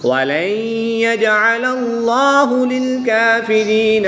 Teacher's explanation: اس میں جلالت اللہ عز و جل کے لام سے پہلے لام پر زبر ہے، تو اس لیے اس لام کو پر یعنی موٹا پڑھیں گے